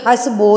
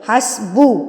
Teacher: ये हसबो नहीं है। बो नहीं है। ओ नहीं है। उ है हसबु ब है बो नहीं है।